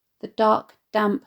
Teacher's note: The alliteration of the plosive d in dark, damp emphasised by both words being stressed